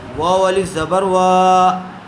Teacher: واو الف زبر وا، واو کے اوپر زبر ہے، زبر والے حرف کے بعد الف آیا ہوا ہے، اس لیے الف مدہ ہوگا، واو کو تھوڑا کھینچ کر پڑھیں گے۔